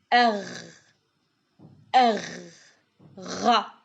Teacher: It is a gargling sound produced from the back of the throat. · From the back of the throat, the sound is similar to the R found in French, like the letter R. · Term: Ghain